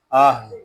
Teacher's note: ہا حلق کے نیچے والے حصے سے یعنی سینے کی طرف سے اس کو ادا کریں گے